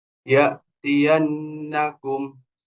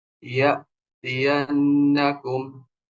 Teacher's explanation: kalau hamzah sukun, maka dia kayak ngerem